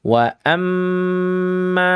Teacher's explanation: ini mim yang bertasydid maka dihukumi dengan gunnah musyaddada. Didengungkan sepanjang 2 sampai dengan 3 harokat. Boleh ya, maksimal 3, jangan berlebihan.